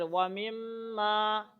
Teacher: غنہ کریں گے، ناک میں آواز آئے گی تھوڑی دیر